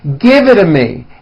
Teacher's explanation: the only big change comes from the t's being pronounced as D's and this happens because the T's fall between two vowel sounds